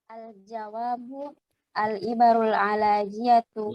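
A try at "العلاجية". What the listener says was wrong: Bukan ala, ilaj. Jadi kata-kata ilaj ya. Al-ibaru al-ilajiyatu isman.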